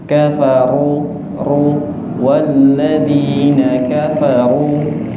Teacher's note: Ra dhammah itu ra-nya tebal, bukan kafaru tapi kafaru ru walladzina kafaru.